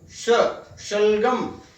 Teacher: ये तालव्य श है जिसका उच्चारण होता है तालु की सहायता से